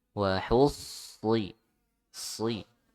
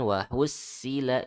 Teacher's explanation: Hati-hati huruf sodnya ditebalkan ya.